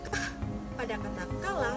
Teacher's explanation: Yang ketiga, konsonan hambat velar yakni keh dan geh. Dihasilkan dengan menempelkan pangkal lidah pada langit-langit lunak.